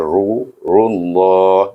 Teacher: Dan lam itu dibaca dengan tebal sebab sebelumnya baris depan.